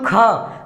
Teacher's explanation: ख को बोलते समय आपके मुंह से हवा बाहर जा रही होगी, तो ये इसमें नहीं आएगा। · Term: महाप्राण